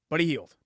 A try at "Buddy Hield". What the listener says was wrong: But you're saying yield. No, you're saying Buddy Yield. You're saying it like it's like Bud. No, Buddy Hield.